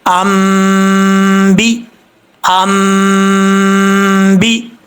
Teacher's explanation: یہاں پر غنہ ہوگا، یعنی اخفا کا، چھپا کر اس کو پڑھیں گے، ناک میں ایک الف کی مقدار غنہ کیا جائے گا۔